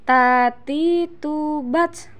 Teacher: Perhatikan, ada udara yang mengalir ketika melafalkan huruf ta.